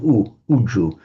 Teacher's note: So the adjective, the Sanskrit adjective, was riju, and then in Pali it lost the R sound and just became uju